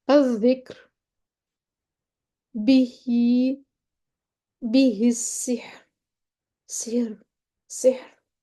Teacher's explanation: را ساکن ما قبل مرقق ساکن حرف ما قبل کسرہ ہو، نرمی سے پڑھیں گے